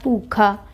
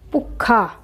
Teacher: ਅਗਰ ਅਸੀਂ ਇਸ 'ਤੇ ਅੱਧਕ ਲਾਉਂਦੇ ਹਾਂ ਤਾਂ ਆਵਾਜ਼ 'ਤੇ ਦਬਾਅ ਪਏਗਾ, ਆਵਾਜ਼ ਸਾਡੀ ਡਬਲ ਹੋ ਗਈ